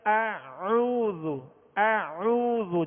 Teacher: آگے عین وسط حلق سے ادا کریں گے